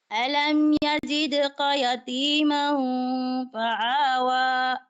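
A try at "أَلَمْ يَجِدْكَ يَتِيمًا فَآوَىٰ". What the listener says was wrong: Wag mong gawin itong ain na. Hindi ito ain. Ayusin mo. Hindi ito ain. hamza. Ayusin mo.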